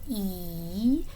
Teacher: it's also considered a tense sound because it feels very tight almost like you're smiling